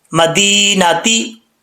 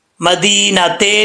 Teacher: ता के नीचे जेर है तो इसको झुका के पढ़ेंगे। ती, ते पढ़ेंगे तो गलत मजहूल हो जाएगा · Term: कसरा